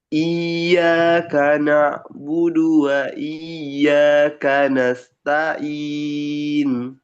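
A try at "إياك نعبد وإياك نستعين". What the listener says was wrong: Ya, terus ya tasdid yang awal itu kurang ditekan. Iya, jangan iya tapi iya gitu. Masih masih iya. jangan datar. Di awal itu agak dihentak gitu.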